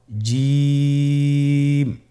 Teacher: এর মাখরাজ হলো জিহ্বার মধ্যখান, তার বরাবর উপরের তালুর সঙ্গে লাগিয়ে উচ্চারিত হয়।